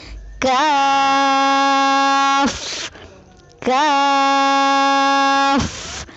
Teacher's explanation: کاف کی ادائیگی میں زبان کی جڑ کو کوے کے قریب تالو پر لگا کر باریک آواز میں پڑھیں، یعنی کاف۔ آئیے مشق کیجیے۔